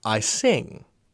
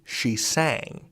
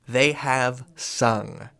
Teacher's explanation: This vowel sound, actually bounces along your mouth. It goes from front to middle to back as you go further and further back in time.